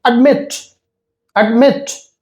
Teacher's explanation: So the stress is on met